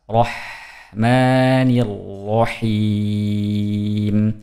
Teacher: Ujungnya dipanjangkan karena mad arid disukun